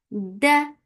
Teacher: Da will get the sifa of shidda. There will be no flow of sound.